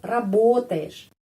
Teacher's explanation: penekanan tetap pada huruf O. Jadi, kita membaca huruf O tetap O.